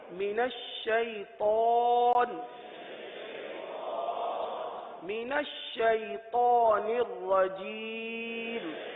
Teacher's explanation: اس میں طا آ رہا ہے، طا کو پر پڑھیں گے. طا حروف مستعلیہ میں سے، من الشیطان نہیں، من الشیطان.